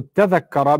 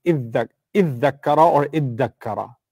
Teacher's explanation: So iddakara becomes iddakara. The dha and the ta together become a dal. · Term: idgham